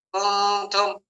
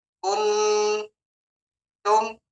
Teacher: Ketika ada dengungan pada nun, kuntum, itu sebenarnya lidah kita sudah mapan pada huruf selanjutnya, huruf ta.